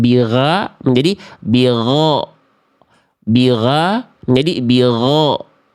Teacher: Bukan A dengan O bukan. tetap yang kita kejar vokal A huruf tebal itu tapi bunyinya kayak bunyi vokal O walaupun bukan vokal O